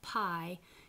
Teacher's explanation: if you put your hand in front of your mouth pie you can actually feel that air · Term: aspiration